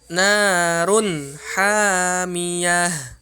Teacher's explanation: tanwin ketemu dengan ha, maka dia tidak ditahan. Hukumnya di sini izhar, harus jelas. Run ha, jangan dibaca narun ha, enggak boleh ditahan.